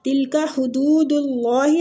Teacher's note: اللہ کے لام کو ادھر پور پڑھیں گے